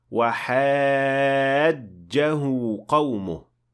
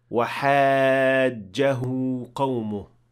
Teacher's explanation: The stress is on the second part of this word, in this case on the jim that has shaddah on top.